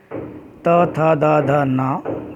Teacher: त थ द ध न और मूर्धन्य स, इनको जब हम बोलते हैं तो हमारी जीभ हल्का सा दांत को स्पर्श करती है